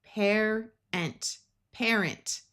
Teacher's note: This A will schwa, which means it will take on a muffled sound. A at the end of words usually does this.